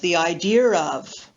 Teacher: most British English speakers use linking R in words like the idea of